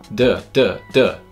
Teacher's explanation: D with the vibration and without the puff du du du you can feel the throat vibrating